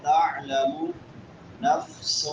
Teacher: عین حلق کے درمیان میں سے